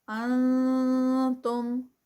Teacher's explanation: یہاں پر اخفا، نون ساکنہ کا رول، کیونکہ آگے جو ہے وہ حروف حلقی نہیں ہے، تا ہے اور تا حروف حلقی میں سے نہیں ہے، جس کی وجہ سے اخفا ہوگا۔